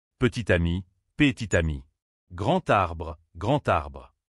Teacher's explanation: dernière consonne d'un mot se colle au début du mot suivant.